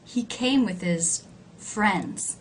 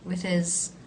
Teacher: possessive pronoun he came with his with his just like with very low in pitch unstressed